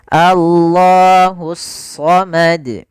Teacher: Yaitu alif lam yang ditulis tapi tidak dibaca lamnya. Langsung ke huruf shad, maka sehingga langsung di sini shadnya berharakat tasydid. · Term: alif lam syamsiyah